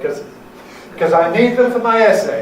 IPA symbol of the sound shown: kəz